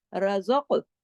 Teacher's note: कॉफ पे कलकला भी होगा, कॉफ मोटा भी पढ़ा जाएगा, क्योंकि कॉफ 7 मोटे हरूफ में भी शामिल है, और कॉफ कुतुबिन जद, कॉफ तो बा जीम दाल, वो जो 5 हरूफ है कलकले वाली, ये उसमें भी शामिल है।